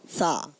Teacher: بغیر سیٹی کے مگر ہلکی سی آواز اور سانس اس میں جاری رہتا ہے